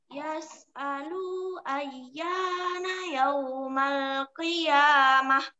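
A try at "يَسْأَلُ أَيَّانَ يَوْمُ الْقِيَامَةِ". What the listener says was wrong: Yaumul, nak. Yaumul qiyamah. Cuma lu-nya pendek, nak ya. Yang panjang di sini cuma ya. Yang panjang di sini cuma ya yang pertama dan ya yang kedua. Yang lainnya pendek semua. Yang panjang tuh ya yang pertama sama ya yang kedua. Lu-nya pendek ya. Yas'alu ayyana yaumul qiyamah.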